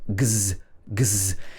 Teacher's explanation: If your vocal cords are vibrating in a voiced sound like g, g, g, if you put your hand here, you can feel your vocal cords vibrating. Then the end of the word will be z, z, because your throat is continuing to vibrate. Your vocal cords are continuing to vibrate.